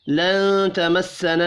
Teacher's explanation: لن تمسنا النار، نون ساکن کے بعد تا ہے، اخفاء حقیقی ہوگا، نون مشدد پر غنہ کریں گے، الف مدہ ایک الف کے برابر کھینچ کر پڑھا جائے گا، را پیش کی وجہ سے پر پڑھیں گے۔